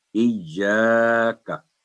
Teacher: جب ہم اسمائلی فیس کریں گے کا تو خود ہی آواز باریک ہو جائے گی، تو ایا 2 سیکنڈ، کا 1 سیکنڈ